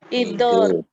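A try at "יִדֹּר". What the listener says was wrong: So not idur, but yidur. Yi.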